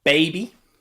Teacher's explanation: that means that it is made using the vocal chords okay vibrate the vocal chords and push that b out from behind your lips that are locked together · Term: b sound